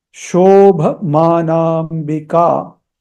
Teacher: Shobhamanambika. A, these two A's after M and N, they have a horizontal bar. So they have to be elongated slightly. Even the one which is after K is to be elongated.